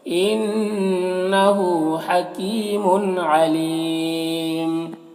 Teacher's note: انہ نون مشدد غنہ کے ساتھ پڑھیں گے